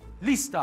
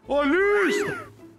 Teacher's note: Olha, ao dividirmos essa palavra em sílabas, nós podemos ver que a primeira é a sílaba tônica, já que o início da palavra é mais forte.